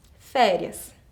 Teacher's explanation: na palavra férias, eu tenho a minha sílaba forte no início, acentuada com um agudo.